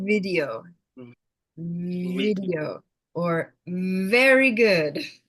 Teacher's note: The V, there isn't the air. There's a lot of vibration.